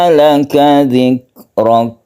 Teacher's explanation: Jadi ada melelehnya di belakang ya, bukan qalqalah kaf itu, tapi dia itu ada lelehan sedikit